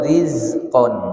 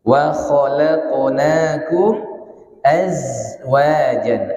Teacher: Ada namanya sifat sofir, suara desisan.